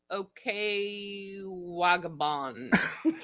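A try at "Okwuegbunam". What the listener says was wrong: Okue Bunam. Yep. The G is silent. Okue Bunam. Bunam.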